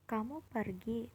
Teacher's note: diucapkan dengan nada naik menandakan pertanyaan